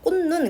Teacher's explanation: 꽃눈 같은 경우는 음절의 끝소리 규칙을 적용해서 치읓이 디귿으로 먼저 바뀌고 비음화가 적용돼서 디귿이 또 니은으로 바뀌었습니다